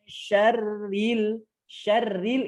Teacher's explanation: syarril itu tipis ingat syarril itu tipis tidak mulai demo tidak boleh tebal